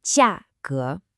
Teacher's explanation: That's a sharp, falling 4th tone, followed by a rising 2nd tone.